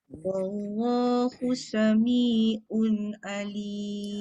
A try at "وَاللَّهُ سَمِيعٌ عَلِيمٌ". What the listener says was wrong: Ain jaga. Wallahu sami'un. Jangan sami'un. Un tu dia tak masuk ain. Sami'un alim.